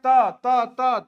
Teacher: त दांत में सटता है।